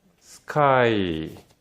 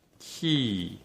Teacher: 한국인은 이 마치 스카이라고 해서 쌍기역에 가깝게 소리를 듣게 되고, 이 키 같은 경우는 키읔에 가깝게 소리를 듣거든요. 근데 이 영어권에서는 이 두 가지 소리의 구별을 잘 하지 못합니다.